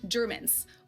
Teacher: just pronounce them more harshly than you usually would and devoice them